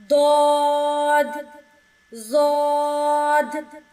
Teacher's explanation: زبان کی کروٹ اوپر اور نیچے والی داڑھوں کی جڑ سے لگنے سے ادا ہوگا۔